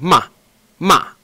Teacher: fourth tone is just going to go down it's gonna go quickly down